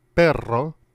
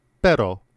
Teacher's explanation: Note that Spanish contrasts the trill with the flap, as in the word perro, meaning dog, that has a trill, and pero, which means butt, which has a flap.